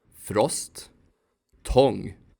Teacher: Short forms for both vowels usually sound the same: [ɔ].